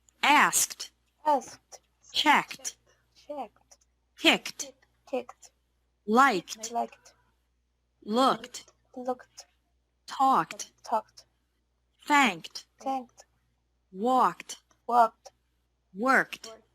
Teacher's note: ED is pronounced like T after verbs ending with a K sound.